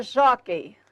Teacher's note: Na palavra jockey, sílaba tônica, jó. Paroxítona terminada em ei, acento obrigatório.